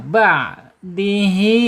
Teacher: Ain makhrajnya ada di tengah-tengah ya. Tengah-tengah tenggorokan